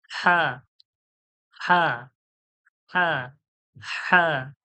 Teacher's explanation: হালকা হাওয়ার মতো একটু যেন হাওয়া মনে হবে যেন গলা থেকে হাওয়া বার হয়ে · যে মানে মুখের দিকে যে অংশটা ওকে বলে কণ্ঠনীর শেষ অংশ কণ্ঠনীর শেষ ওই কণ্ঠনলির শেষ থেকে বার হবে